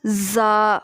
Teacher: اب زبان کو جو ہے وہ دونوں دانتوں کے اندرونی کنارے سے لگائیں تو کیا نکلے گا؟ زا، اور سیٹی بھی آئے گی ساتھ میں